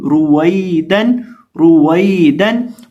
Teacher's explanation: इस लफ्ज के अंदर हम रॉ को मोटा पढ़ेंगे और वाव को पढ़ते वक्त होंठों को गोल करेंगे। और यहाँ ये जो या है ये याए मद्दा की नहीं है, ये याए लीन की है, इसलिए यहाँ हम हरफ को लंबा नहीं करेंगे।